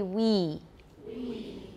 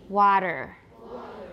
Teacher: We, for we, your tongue is more, it's higher and more front. It's higher and more front for we. Water, it's more back and low.